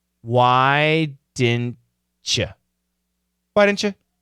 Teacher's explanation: And of course, the U changes to a schwa · the T and the Y can combine to get a CH sound